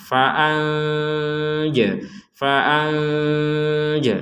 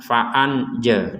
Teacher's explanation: nun sukun bertemu jim kita baca dengan samar